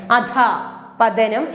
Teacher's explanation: വിസർഗ ചിഹ്നം ഉപയോഗിക്കുമ്പോൾ നമ്മുടെ ഉള്ളിൽ നിന്നും പുറത്തേക്ക് പോകേണ്ട സൗണ്ട് ഹ എന്ന സൗണ്ടാണ്. അധ പതനം എന്നാണ് നമ്മൾ ഉച്ചരിക്കേണ്ടത്.